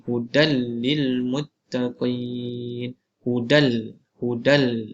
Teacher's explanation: kita masukkan nun sakinah dan tanwin itu kepada huruf selepasnya tanpa dibaca gunnah. Kita tak baca panjang lah. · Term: idgham bila gunnah